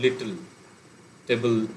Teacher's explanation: টেবিলের এলটা একটা syllable form করে